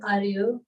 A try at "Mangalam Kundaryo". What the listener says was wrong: Kund Kundaryo. Kund. The should be, we should be able to hear it. Kund Kundaryo.